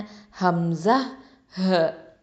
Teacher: அப்போ தொண்டையின் அடிப்பாகத்திலிருந்து ஒலிக்கக்கூடிய எழுத்துக்கள் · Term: அக்கசல் ஹல்க்